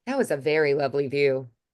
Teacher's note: I just cut off that T entirely.